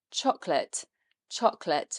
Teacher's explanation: And it's not late, so don't try and read it phonetically. The L-A-T-E suffix there is not late. It's said as lut.